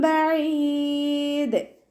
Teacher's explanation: അയിനിൻ്റെ സൗണ്ടിനെ clear ആക്കി കൊടുക്കുക. മഖ്റജ് വസത്തുൽ ഹൽക്ക് തൊണ്ടയുടെ മധ്യഭാഗം. അവസാനത്തിൽ മദ് ആല് സുക്കൂനിൽ വഖഫ് ചെയ്യുമ്പോൾ 2, 4, 6 കൗണ്ട് വീതം നീട്ടി വഖഫ് ചെയ്യാൻ ശ്രദ്ധിക്കുക കേട്ടോ.